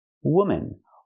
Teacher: the second syllable is relaxed and closed